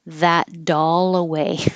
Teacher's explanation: the T changes to a d and the L connects to the a